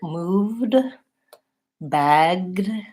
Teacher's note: Even though there's a vowel letter between the V and the D, there's actually no vowel sound. Moved is two consonants together, and bagged is two consonants together. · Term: consonant clusters